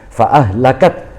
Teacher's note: maka huruf mati yang kedua itu menjadi kecil, seolah-olah terhalang oleh huruf mati yang pertama.